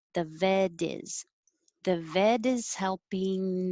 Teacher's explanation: to hire on vet the vet is helping our dog and the t changes to a d